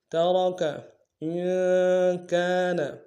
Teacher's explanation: مما ترک میں را کو موٹا ادا کریں گے